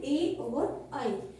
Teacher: कंठ और तालु से, यानी गले और हमारे कोमल तालव्य भाग से इन दोनों का उच्चारण होता है। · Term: कंठ तालु